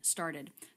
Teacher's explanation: So the vowel sound here is the I as in sit vowel followed by the D consonant.